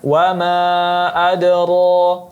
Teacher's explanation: ra dibaca tebal karena dia berbaris fathah dan dibaca 2 harakat karena dia mad tabi'i